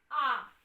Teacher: तो मात्रा का उच्चारण कैसे करेंगे वो ध्यान दीजिए। जैसे आ में हम लोग का पूरा मुंह खुलता है। आ, जैसे आप इस प्रकार यहाँ देखिए, आ की मात्रा है।